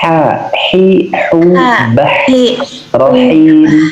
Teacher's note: huruf H di tenggorokan paling di tengah